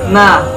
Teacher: Makhorijul huruf nun terletak pada ujung lidah bertemu bawah sedikit makhraj huruf lam dari arah gusi gigi atas.